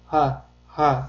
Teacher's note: Ha harfi esa juda yumshoq talaffuz qilinadi va bo'g'zimizning eng tubi qismidan, ya'ni o'pkamizga yaqin joyda hosil bo'ladi.